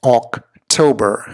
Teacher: the emphasis, the weight on the second syllable right here, October.